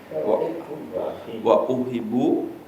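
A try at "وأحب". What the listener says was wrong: Pakai tasjid. Wa uhibbu. Pakai tasjid.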